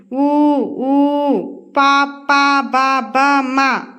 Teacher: వీటన్నిటిని పెదవుల సాయంతో పలుకుతాం వీటిని ఓష్ట్యాలు అంటారు